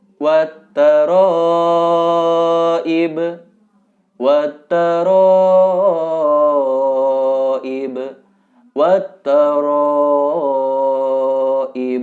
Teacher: harus dipanjangkan bacaannya sekitar empat harokat